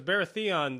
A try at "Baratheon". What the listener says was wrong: you're emphasizing the wrong syllables varathia the accent is on the wrong syllable